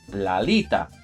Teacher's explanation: So that la is going to be merged with the first syllable of alita because it is a three-syllable word now, which ends in a vowel, meaning the second to last syllable, which is going to be li, is now the one that's stressed.